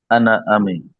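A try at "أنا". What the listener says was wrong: আনা টান হবে না, আনা আমি।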